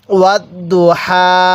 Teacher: ওয়াও লাগবে, এই দদের সাথে ওয়াত দত পেশ দু, ওয়াত দু হায়া খারা জবর হা, তাহলে ওয়াত দু হা। এই হাটা উচ্চারণের সময় মুখ দিয়ে হালকা বাতাস বের করব